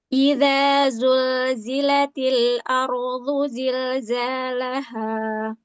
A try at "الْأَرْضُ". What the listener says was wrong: Rohnya jangan mantul, jangan are. Ardu. Tebal, tapi jangan mantul. Ardu. الأرض